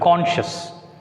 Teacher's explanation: I have written another word, conscious, but it is an adjective. So, it takes stress on C, first syllable.